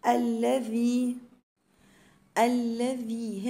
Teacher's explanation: هنا حرف الذال من الحروف اللثويه